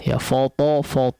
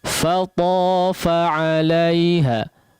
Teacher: Kita tahu huruf to adalah huruf yang tebal. Huruf fa-nya jangan ikut menjadi tebal.